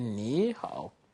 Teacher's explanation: It becomes the second tone because the following syllable is also from the third tone.